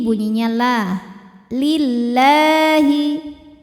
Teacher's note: Qawwamina lillahi, lam pada lafaz Allah atau lam jalalah dibunyikan secara tarqiq sebab huruf sebelumnya berbaris kasroh, maka dibacanya tipis